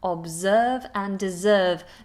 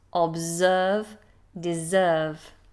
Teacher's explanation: Notice those S's are actually Z sounds.